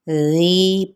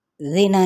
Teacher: ذی پہ یا مدہ یا مد اصلی بالالف، اس کو ایک الف لازمی کھینچنا ہے، ذی پڑھنا ہے، زینا نہیں پڑھنا، ٹھیک ہے۔